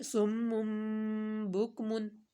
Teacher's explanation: میم تنوین کے بعد اقلاب کا با آ گیا تو میم کو میم میں مدغم کریں گے